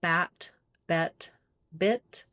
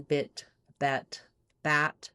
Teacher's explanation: going from the more open to the more closed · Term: lax front vowels